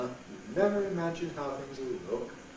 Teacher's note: Low pre-head. High stepping head. Low rise.